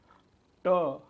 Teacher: ट हा टाळूला स्पर्श करतो म्हणून त्याला तालव्य